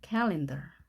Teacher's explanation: 우리 카렌다라고 하지만 아가 아닌 어입니다. calendar.